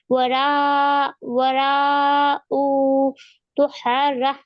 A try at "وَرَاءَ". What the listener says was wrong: वरा ऊ नहीं हमजा पर जबर है वरा ज़हरी